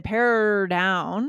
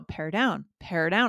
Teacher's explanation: I move into the D quickly I don't hang out on top of the r